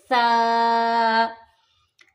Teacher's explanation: ता, त्वा, और त्वा में हमारी ज़बान थोड़ा सा पीछे आएगी। सा में ज़बान को हमने बिल्कुल दांतों के दरमियान थोड़ा सा टच करना है